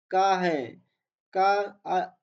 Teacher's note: का आघोष अल्प प्राण है।